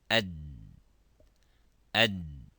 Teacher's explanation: if we pronounce the dal, it stops completely. Ad, ad.